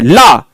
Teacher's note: पार्श्विक पूछा जाए जो ला, आप जैसे ही एकदम से जीभ को, टंग को ऊपर लेके एकदम तुरंत फटकते हो नीचे ला, और पार्श्व भाग से हवा निकल जाए तो उसी को कहा जाता है दोस्तों एक पार्श्विक व्यंजन।